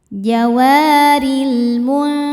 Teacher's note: Sebab alif lam menghadapi huruf qamariyah yaitu mim. Cara bacanya lam dibaca jelas atau disebut izhar qamari.